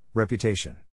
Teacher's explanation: in this case the accent is in the third syllable